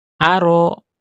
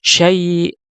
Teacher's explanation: untuk huruf hamzah makhrajnya adalah dengan uh, menutup pita suara sehingga kemudian tidak ada udara yang mengalir ya. Sehingga tidak ada udara yang mengalir, maka dia akan tertahan udara di sini ya.